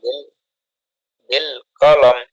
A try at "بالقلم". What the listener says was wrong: টান হবে না বিল কলম বিল কলম